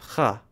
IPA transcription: x